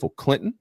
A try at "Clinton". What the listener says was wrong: Clinton. No, Clinton. There's no T. Let's keep that in mind. There is not a T in Clinton.